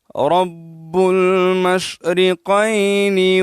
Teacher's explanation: شین میں تفشی ہے، تفشی کسے کہتے ہیں، منہ میں آواز پھیلنے کو تفشی کہا جاتا ہے۔